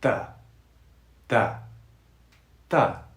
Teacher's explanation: We don't breathe through the hard TH sound, unlike the soft TH sound